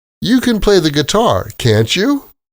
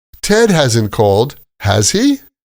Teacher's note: These are true questions. So, again, rising intonation.